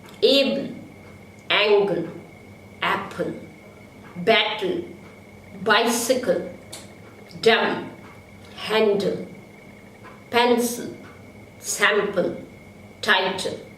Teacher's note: Now l can also be syllabic in English.